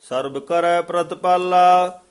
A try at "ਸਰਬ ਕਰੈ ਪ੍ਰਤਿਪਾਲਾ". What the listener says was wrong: ਜਿਆਦਾ ਨਾ ਸਰਬ ਨਹੀਂ ਆਊਗਾ ਕਿਤੇ ਵੀ ਭੱਬੇ ਨਾਲ। ਸਰਬ ਬੱਬੇ ਨਾਲ ਹੀ ਪਾਠ ਬੋਲਣਾ ਹੈ।